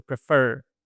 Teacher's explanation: the word prefer it has the stress on the second syllable